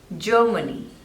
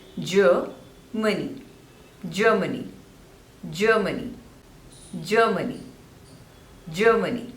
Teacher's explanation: So 3 syllables and stress is on the first one.